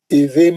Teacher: होठों को सख्ती से पकड़ के आवाज को नाक में ला के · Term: इखलाब